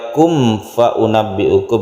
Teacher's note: Kemudian mim mati bertemu dengan fa, ini izhar syafawi, tidak perlu dengung. Ketika membaca kum fa unabbi'ukum ini tidak berdengung mimnya.